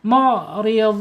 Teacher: Mu'ridun mad arid lis sukun panjangnya 2 harokat, 4 harokat atau 6 harokat.